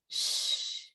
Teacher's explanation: the tongue reaches upwards towards the roof of the mouth without touching it. And then the tip of the tongue lowers behind the teeth.